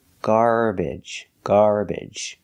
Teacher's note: you can also pronounce it with the short e like eggs and bed